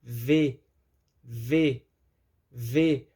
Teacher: os dentes superiores tocam nos lábios inferiores e trazem uma sensação de estar colocando para fora o ar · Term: fonema ver